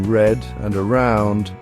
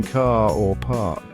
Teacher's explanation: in British English we generally only pronounce the r when it comes before a vowel sound for example we pronounce the r in red and around but